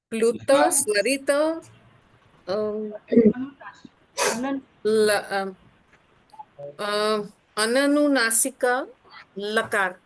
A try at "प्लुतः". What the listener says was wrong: प्लुतः, या प्लुतः, विसर्ग को भी छोड़िए मत। अननुनासिकः, संपूर्ण विसर्ग के साथ बोलिए। और लकारः